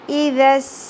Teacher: سین میں سیٹی کا element clear ہونا چاہیے